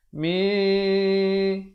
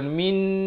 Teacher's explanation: Dibacakan dengan disembunyikan bunyi nun matinya di belakang sin dengan kadar 2 harakat. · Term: hukum ikhfa